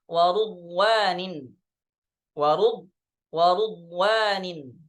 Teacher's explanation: riwayat Syu'bah bi dhammir ra, dengan mendomahkan huruf ra